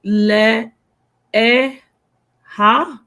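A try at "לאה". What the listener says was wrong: Yeah, they would pronounce it le-a. So the aleph contains the short sound, right? So the ha is not vocalized.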